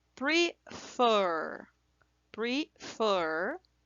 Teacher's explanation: Então, a sílaba forte é fur, a última sílaba